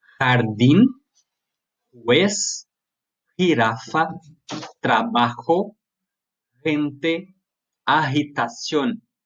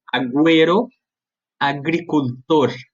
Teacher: Perceberam que é tudo como se fosse o R nosso, né? Do português, o R mais forte. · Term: som de R